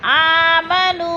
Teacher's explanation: آمنو، نو پہ وہ مدہ ہے، کیونکہ حروف مدہ کے بعد حمزہ دوسرے کلمے میں آ گیا ہے تو ادھر مد منفصل ہے، 4 الفی مد ہے، 4 حرکات کے برابر ہم نے اس کو کھینچ کر پڑھنا ہے۔